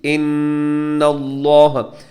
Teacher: نون مشدد پہ غنہ ہے، لفظ اللہ کو موٹا پڑھنا ہے